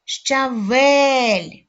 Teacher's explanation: твердий приголосний е голосний л М'який приголосний визначимо наголошений склад визначили Давайте перевіримо щавель наголошеним є другий склад